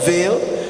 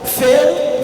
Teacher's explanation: That's with the voice labiodental fricative, v, and it was substituted with f, the voiceless one